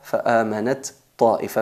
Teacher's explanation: fusionamos la ta y ta